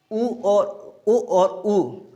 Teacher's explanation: बिना ओठ की सहायता से आप ऊ और ऊ यानी बड़ा ऊ और छोटा ऊ नहीं बोल सकते हैं। यानी आपको कंठ ओष्ठ के बंद करके ओष्ठ या आप किसी तरह से नहीं बोल सकते हो, क्योंकि ओष्ठ आपका ज़रूर खुलेंगे जब बोलोगे तो।